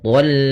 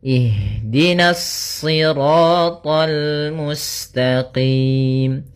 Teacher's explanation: karena kita bertemu dengan huruf lam, maka dia lam-nya tipis, jangan ikut tebal, jangan thal, itu tebal.